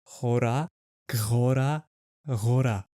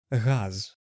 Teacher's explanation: This sound might be similar to the German r, like in the word Hut or Haus. But think of the word like the English H, but instead of the voiceless sound like in house, add your voice by blending in a g sound. That gives you the Ukrainian sound r, like in the word gora, which is the word for mountain.